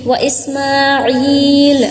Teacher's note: عین کو بھی کھینچنا ہے، اوکے، کیونکہ یہاں پہ یا مد آئی ہے